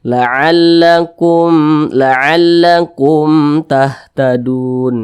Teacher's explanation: tidak berjumpa dengan huruf mim maka semuanya hukumnya adalah izhar syafawi jadi izhar itu dia tidak didengungkan dibaca jelas jadi kumnya ini dibaca jelas tidak berdengung la'allakum tahtadun jangan dibacaum